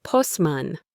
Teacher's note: We say postman. The T disappears.